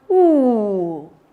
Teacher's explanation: The tongue glides to the back of the mouth and the tongue raises. It rises up. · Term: back high vowel sound